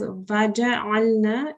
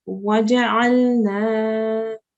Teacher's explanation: So we're not reading as vaja'alna. It's being read as waja'alna.